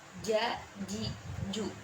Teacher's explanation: Huruf jim, yaitu ja, ji, ju. Tengah lidah harus benar-benar menempel pada langit-langit di atasnya.